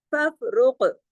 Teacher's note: अब देखिए फफरुक, फफरुक के अंदर फफ तो बारीक पढ़ा जाएगा, रा मोटा पढ़ा जाएगा, और काफ भी मोटा पढ़ा जाएगा, लेकिन काफ पे कलकला भी होगा, इसलिए कि काफ जज़म के साथ है